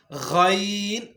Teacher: ادنائے حلق سے یعنی حلق کے شروعاتی حصے سے غین ادا ہوگا